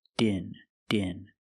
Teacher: The D sound at the end, plugged, link with the next word, in.